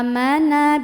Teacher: ada mad badal karena ada Hamzah yang dipanjangkan maka bacanya panjang dua harakat